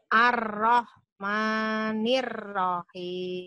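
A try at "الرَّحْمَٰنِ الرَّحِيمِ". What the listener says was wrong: Ar-Rahman 2 aja. Ma-nya 2 kali aja.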